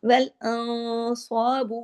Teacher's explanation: نون ساکن کے بعد صاد ہے، اخفا ہیوی سا ہوگا، اخفا حقیقی غنہ کاملہ